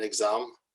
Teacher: X always represents the GZ sound in exam.